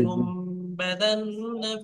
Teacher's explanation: তানবিন বা নুন সাকিনের পরে যদি বা আসে, তাহলে নুনকে মিমের দ্বারা পরিবর্তন করে একাধিক পরিমাণ গুণনা করে পড়তে হয়। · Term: ইকলা